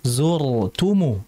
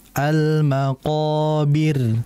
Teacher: harusnya yang tebal itu zur jangan maqabirnya tadi maqabirnya tebal harusnya tipis jadi jangan kebalik jadi harus dibacaumul maqobir seperti itu almaqobir seperti